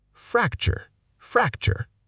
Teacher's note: Fracture, not fracture with equal weight. The second syllable almost disappears. Chur.